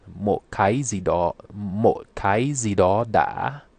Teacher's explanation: rising broken tone with a glottal stop